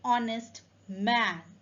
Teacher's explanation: the H in honest is silent so the word starts with a vowel sound